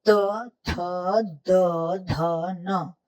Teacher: हर बार आपकी जिह्वा यानी कि जीभ दांतों के पीछे टच होती है। त, थ, द, ध, न बिल्कुल एक ही स्थान पर टच होती है, तो उच्चारण आपका एक जैसा रहता है।